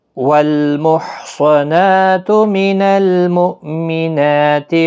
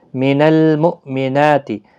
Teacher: حمزہ ساکن کو جھٹکے کے ساتھ ادا کیا جائے گا، نون کے اوپر کھڑا زبر ہے، ایک الف کی مقدار کے برابر کھینچ کر پڑھیں۔